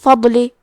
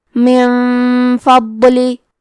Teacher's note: ضاد حروف التفخیم میں سے ہے، تو ہم یہ حرف کو بھاری آواز میں پڑھیں گے، اور کیونکہ یہاں ضاد ساکن ہے تو ہم یہ حرف کو ظاہر بھی کریں گے۔